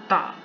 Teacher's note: سامنے والے اوپر کے سامنے والے دو دانتوں کی جڑ کے ساتھ زبان کی نوک لگائیں گے